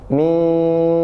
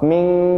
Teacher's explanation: harusnya samar dan mendengung minyarril jadi persiapan antara Nun dan syin itu jelas minyar bukan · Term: ikhfa Hakiki